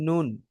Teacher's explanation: নুন জীবাহের আগা তার বরাবর উপরের তালুর সঙ্গে মিলে পড়তে হয়।